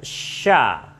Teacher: sya ini makhrajnya nanti sama dengan ya di tengah lidah dengan angin yang banyak